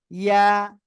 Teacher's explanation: জিহ্বার মাঝখান তার বরাবর উপরে তালুর সঙ্গে লাগিয়ে আমরা উচ্চারণ করব সিম্পল ভাবে, ইয়া, এক আলিফ টান হবে।